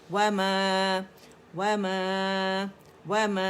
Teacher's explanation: वमा, वमा, वमा, इसे माँ नहीं बनाना, ठीक है, खुले उससे अदा करना, गुन्ना नहीं आना चाहिए